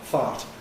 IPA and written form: θɑt (thought)